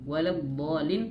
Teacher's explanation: huruf dhad dia memiliki sifat istitalah, yaitu memanjang. Ngalir suara.